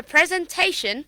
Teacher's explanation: Now, same goes to this one also, that before shun, the syllable before shun, you will stress on that syllable